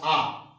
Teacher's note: उसके बाद जब हम लोग आ बोलते हैं, ध्यान दीजिएगा, आ, तो जो आ होता है वह पश्च से, पीछे से निकलता है, ये इसलिए पश्च हो गया।